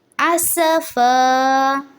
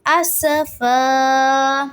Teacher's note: یؤمنو بہذا الحدیث سا کی زیر کو لمبا نہیں کریں گے. اسفا سین میں سیٹی کی آواز ہونی چاہیے